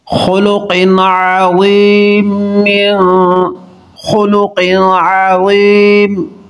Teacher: نون تنوین کے بعد عین حروف حلقی ہے، اظہار کریں گے